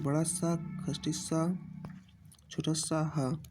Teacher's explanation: जिन वर्णों का उच्चारण करते समय मुख और नाक से गर्म वायु निकलती है उन्हें ऊष्म व्यंजन कहते हैं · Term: ऊष्म या संघर्षी व्यंजन